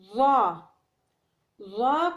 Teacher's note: ظا کو زبان کی نوک اور ثنائے علیہ کا سرا کے ساتھ ادا کیا جاتا ہے، یعنی زبان کی نوک ثنائے علیہ کے سرے کے ساتھ ملا کر ادا کرنا پڑتا ہے، جیسا کہ زال اور سا ادا کیا جاتا ہے.